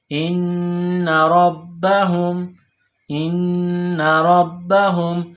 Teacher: یہ گول ہا ہے چشمے والی، منہ سے ہوا نکالنے کی طرح، اس کو پڑھتے ہیں ہا کے اوپر پیش ہے، اس کے بعد میم ہے، میم کے اوپر جزم ہے تو ہا کو میم کے ساتھ ملائیں گے جزم کی وجہ سے۔